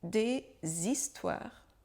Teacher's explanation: Des histoires, notre première petite liaison, le S de D, avec notre liaison, il va devenir un son Z que l'on va prononcer comme s'il était attaché au deuxième mot, histoire.